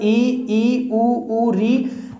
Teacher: बात करें संवर्त स्वरों की तो जिन स्वरों का उच्चारण करने पर मुंह है सबसे कम खुलता है उन्हें संवर्त स्वर कहते हैं।